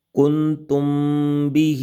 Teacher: یہاں پر میم ساکن کے بعد حرف با آ جائے تو یہاں پر بھی اخفاء شفوی ہوگا، یعنی کہ غنہ کر کے پڑھیں گے، جیسا کہ کنتم بہ۔